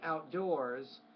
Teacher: put the stress on that second part of the word, not the first part of the word, and then don't forget your S.